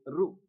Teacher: ఋషిలో ఉండేటువంటి రు మూర్ధన్యం, మూర్ధన్యాక్షరం